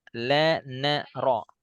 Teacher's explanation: makhraj lam itu berarti ke depan itu perbatasan ya antara gigi dari atas dengan langit-langit